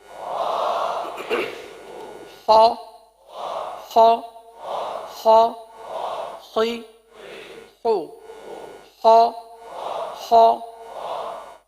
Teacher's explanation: حرف کو پر ادا کرنا ہے کیونکہ حروف مستعلیہ ہے.